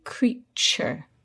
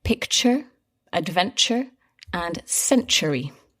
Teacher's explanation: the T is not pronounced T, as in to. It's pronounced ch, like in cheese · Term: ch sound